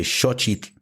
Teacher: you get the sh sound, you get the ch sound, and you get the TL at the end